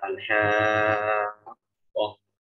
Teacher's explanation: fokusnya mad lazim itu bukan hanya pada panjang, tetapi juga pada penjelasan tasydidnya. Al-haqqah, jangan al-haqqah.